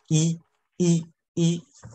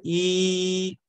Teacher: ，剩下一堆全部发音。这也少见哈，这也少见。好，下面在词首啊这几个组合，大家得记下来啊。实际上很像，大家能够摸出其中的规律啊。第一个单词我已经用颜色给它划分出它的音节了，day▁sound▁的哈，day▁sound▁的哈，day▁sound▁的哈。第二个▁dessert，dessert。下面一个▁essay▁essay▁essay▁essay▁effet▁effet，最后一个▁vice▁versa▁vice▁versa。好，这个呢是我们上节课学习的这个发音啊，上节课学习这个发音，还有一个特别简单的，我们也学过了，就是这个。一，这个大家也了解，非常的简单。一，但是呢，它的发音呢，更加的紧张有力。什么地方紧张有力？你的口腔的肌肉啊，这两边一，而不能是一， 没有这么长啊，很短促，很有力